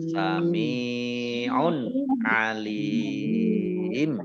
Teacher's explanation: Mat arid li sukun dibaca panjang, boleh 2 harokat, boleh 4 harokat, boleh 6 harokat.